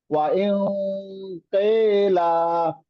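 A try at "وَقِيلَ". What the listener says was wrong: আহ আবার বলেন দেখি লাস্টেরটা টান দিয়ে, দুই আলিফ। কিল কিলা, হ্যাঁ।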